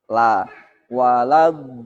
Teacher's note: harokat lam fathahnya jangan sampai terseret masuk ke dot, terpengaruh oleh dot, sehingga ada suara laut, walaud do.